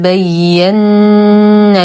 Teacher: نقلق ل الدال قلقله صغرى فهي ساكنه وسط الكلام بين ال ننتقل من فتحه النون المشدده بغنه اكمل ما تكون